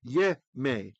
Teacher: So when you have a yod with a comets, that's the thing that looks like a capital T, the ah, the full ah sound, or o if you're doing it in Ashkenazi, and the accent comes later, then when that accent moves, that ah, the stress gets reduced and it becomes a vocal schwa, eh.